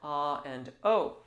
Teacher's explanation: of the tongue is lightly touching the front I'm teeth and the rear of the tongue is either quite high in the rear of the oral cavity or it's coming down a little bit usually to accommodate the so-called wider vowels like ah and O